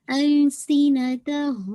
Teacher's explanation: سی کا ساؤنڈ واضح ہونی چاہیے, ویسلنگ ساؤنڈ. السینتہم. ٹھیک ہے, میم ساکن کے بعد آپ دیکھیے با آ رہا ہے, تو با کے آپ کو پتہ ہے کہ یہ اخفا میم شفوی.